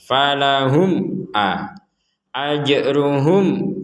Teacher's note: mim sukun bertemu Ain mim sukun bertemu Hamzah mim sukun bertemu Ain ya sama-sama dibaca jelas